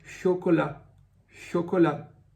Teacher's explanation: que o t também não é pronunciado no final e chocolá você pode perceber que o som é fechado nas duas vezes que o aparece · é o som o como por exemplo na palavra chocolá chocolá você percebe que o t também não é pronunciado no final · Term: som fechado